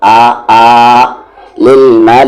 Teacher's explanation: لل، میم پہ زبر ما، لام پہ کھڑا زبر لا، ملا، مد کے سمبل کے بعد حمزہ ہے تو مد کو 3 سے 4 حرکت کے ایکول کھینچیں گے ، یعنی آ للملائکتس، یہ تی کو یہاں ملا دیں گے